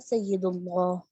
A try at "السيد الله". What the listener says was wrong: دیکھیں اس کے ساتھ ٹھیک ہے, اس کے ساتھ الف لام آ رہا ہے نا, السید اللہ. اس کو پڑھیں السید اللہ.